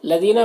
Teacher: لدینہ میں یا مدہ ہے تو اسے ایک الف کے برابر کھینچیں گے